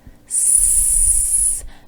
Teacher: There's no vibration when you say the S sound. You won't feel anything in your throat. That's because the voice is off.